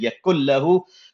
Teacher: We completely merged the kaf and the lam together completely. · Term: idgham bighair ghunna